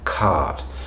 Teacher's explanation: where we have a vowel then an R then some sort of consonant we don't pronounce that R either